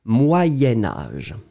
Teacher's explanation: comme vous faites le lien entre les deux, vous allez prononcer « moyenne »